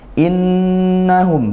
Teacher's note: ini nun bertasydid maka dibaca ghunah juga dengung